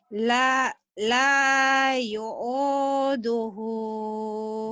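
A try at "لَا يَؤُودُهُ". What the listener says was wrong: Bukan yu'u. Bukan yu'u. La ya'uduhu. La ya'uduhu.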